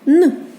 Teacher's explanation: коли ми вимовляємо н язичок до верху до зубок ставимо і спробуємо його співати але він не співається це приголосний звук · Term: приголосний звук н